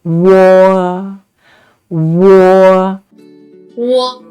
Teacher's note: When pronouncing wo, we need to say wu first and then quickly glide to say o. So wo. And make sure the o sound is much longer and louder than the u sound.